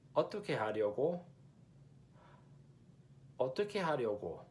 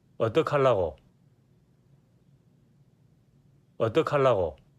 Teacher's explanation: Busanians will typically contract the two soul words, so 어떻게 and 하려고, into one. And the ya diphthong vowel in 하려고 sounds more like an ah. So 어떡하려고.